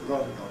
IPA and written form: ɾondoŋ (London)